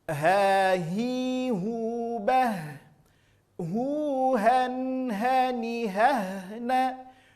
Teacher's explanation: Keluar dari aqsal halqi, keluar dari pangkal tenggorokan. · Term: huruf ha